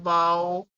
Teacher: تو ہمارے پاس جو ڈیفینیشن بنے گی واؤ کی وہ یہ ہوگی کہ دونوں ہونٹوں کو گول کرنے سے. جب ہم دونوں ہونٹوں کو گول کریں گے اور ہم اس کو مکمل بند نہیں کریں گے، تھوڑا اس کو کھلا رکھیں گے · ہمارے ہونٹ جو ہیں وہ بند نہیں ہوں گے، صرف گول ہوں گے. اور گول بھی بہت زیادہ ہم لوگوں نے اس کو گول نہیں کر دینا، اتنا زیادہ ہم نے گول نہیں کر دینا کہ بہت تھوڑی سی جو ہے وہ سوراخ رہ جائے.